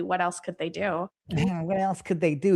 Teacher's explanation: The up talk is annoying. The vocal fry is annoying.